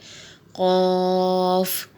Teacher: قاف جو ہے یہ موٹے حروف میں سے ہے اسے موٹا ادا کریں گے. اور یہ قاف کا مخرج یہ ہے کہ زبان کی جڑ اور تالو کے نرم حصے سے ادا ہوتا ہے یعنی جسے کوا بھی کہا جاتا ہے اس کے قریب سے یہ ادا ہوتا ہے.